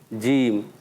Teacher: देखें अदा करेंगे आप जीम, तो आप खुद सोचें, जीम मेरी तो ज़बान का दरमियान और ऊपर तालु का दरमियानी हिस्सा लगा